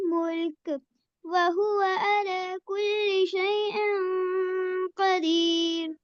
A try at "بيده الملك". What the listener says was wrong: मुल्क नहीं कहना बेटे, मुल्क। बड़ी सॉफ्टनेस के साथ मुल्क को जज़म दे के छोड़ना है, झटका नहीं देना। ये झटके वाले हरूफ में से नहीं है। बियदिहिल मुल्क, बियदिहिल मुल्क, ठीक है?